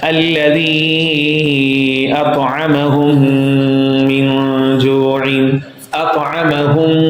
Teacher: Meme sakin, and then there is another meme. Both memes would be merged. This is called idgham. And this would be bil ghunna, with ghunna. · When there is another meme after meme sakin, 2 memes are jointed. Okay? Meme sakin, and then there is another meme. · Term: idgham bil ghunna